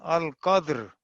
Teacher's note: अल कद्र वक्फ किया तो रा भी साकिन, दाल पहले ही साकिन था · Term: इज्तिमा साकिनैन